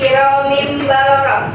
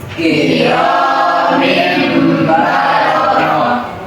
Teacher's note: Di dalam bacaan iqlab ini, bacaan nun mati atau tanwin tidak lagi dibaca sebagai nun atau tanwin, tetapi berubah bunyinya menjadi huruf mim.